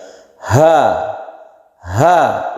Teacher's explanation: rongga mulut kita itu terbuka Karena ini dari dalam jadi dari pangkal tenggorokan dari tenggorokan bagian bawah sehingga menimbulkan suara yang agak besar